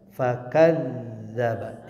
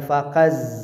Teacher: zalnya di tasydid, dialirkan suaranya